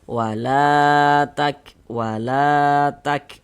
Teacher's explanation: Maka huruf yang memiliki harakat fathah itu kita baca panjang sehingganya la kita baca panjang. Mad thobi'i panjangnya dua harakat.